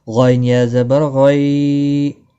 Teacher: غین مستعلیہ ہے، موٹا پڑھنا ہے